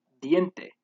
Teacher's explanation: next we have the interdental nasal sound which occurs whenever the n is before a t or a d this is produced by putting your tongue in between your teeth